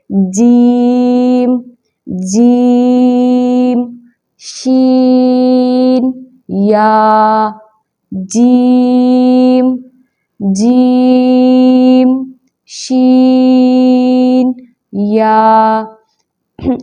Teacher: اب شجر اللسان والا حصہ جب تالو کے درمیان سے لگے، یعنی جو تالو ہوتا ہے ہمارے منہ کے اوپر والا حصہ ہوتا ہے، اس کے سینٹر میں جا کے لگے گا تو 3 حرف ادا ہوں گے